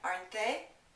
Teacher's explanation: Notice the T in aren't is not pronounced. When we have a negative contraction in the tag, the T is going to be silent.